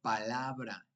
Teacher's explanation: la sílaba tónica es la penúltima sílaba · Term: grave